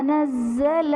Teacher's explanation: نزل میں زا مشدد ہے تو یہاں پر مشدد حرف کو 2 مرتبہ پڑھا جائے گا